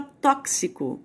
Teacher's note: a palavra tóxico eu estou vendo 6 letras 6 letras mas tem sete fonemas porque tem um som de ks